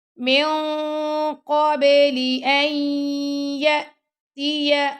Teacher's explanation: من قبلی جو اخفاء ہو رہا نا وہ ہیوی اخفاء ہوا، کیونکہ جو قاف ہے وہ ہیوی لیٹر ہے